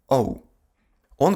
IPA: ɔʊ